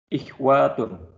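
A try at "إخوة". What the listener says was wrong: Ikhwatun. Wanya pendek ya. Ikhwatun. Nah, ikhwatun.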